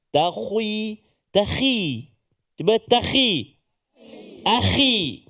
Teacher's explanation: Jangan pula kita nak tebalkan sangat kha tu sebab dia baris kasrah, baris bawah. Jadi dia buat alladzina yattakhi.